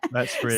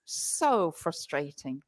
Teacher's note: stressing that really, which shows her frustration and her annoyance. The stress communicates her frustration.